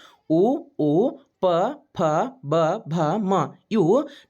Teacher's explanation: ನಂತರ ಓಷ್ಟ್ಯ ಅಕ್ಷರಗಳು ಬಹಳ ಇಂಪಾರ್ಟೆಂಟ್ ಓಷ್ಟ್ಯ ಇದರ ಅರ್ಥನೇ ತುಟಿ ಅಂತ ಆಗ್ತೈತಿ ಈ ತುಟಿಯ ಮೂಲಕ ಉಚ್ಚಾರ ಮಾಡಲಾಗ್ತಕ್ಕಂತಹ ಅಕ್ಷರಗಳನ್ನ ಓಷ್ಟ್ಯ ಅಕ್ಷರಗಳು ಅಂತ ಕರೀತೀವಿ